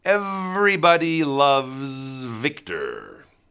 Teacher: feel the upper teeth and the lower lip have that vibration